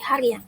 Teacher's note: Pada fonem an pada dasar hari akan muncul bunyi semivokal y.